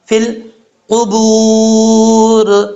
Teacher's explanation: میم کیا گیا، الف ہے، الف کی مقدار لمبا کریں گے. فا کو جب لام سے ملائیں گے بیچ میں یا ہے، گر جائے گا